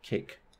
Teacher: this K is at the end of the word and it is also unaspirated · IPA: [ˈkʰeɪk]